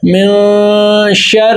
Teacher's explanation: اب من شر, اب ہم نے یہاں پر کیا کریں گے, ہم یہاں پر کریں اخفا, کیونکہ نون ساکن کے بعد حروف اخفائی میں سے شین آ گیا تو اب یہاں پر اخفا ہوگا, کیونکہ نون کی آواز کو ہم ناک کے اندر لے جا کر ایک الف کی مقدار کے برابر ہم اس کو چھپا رہے ہیں